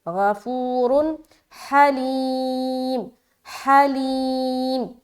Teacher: دو پیش کی تنوین کے بعد ہا ہے تو یہاں پر اظہار کا قاعدہ کریں گے